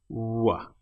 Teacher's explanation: The W sound, your lips are close but they're not actually touching. W. It's more like a soft vowel sound.